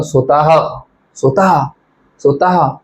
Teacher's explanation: शेवटी ह चा उच्चार होत आहे आणि श्वास सोडून हलकासा आवाज जात बाहेर हलकाशी हवा जात बाहेर म्हणजेच काय ज्याचा उच्चार ह प्रमाणे होतो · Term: विसर्ग